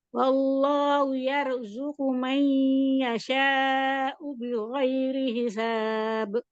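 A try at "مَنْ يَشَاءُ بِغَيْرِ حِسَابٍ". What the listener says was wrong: Ya, yashanya panjangin lagi. May, tahan ya, nanya may yasha'u bighairi hisab.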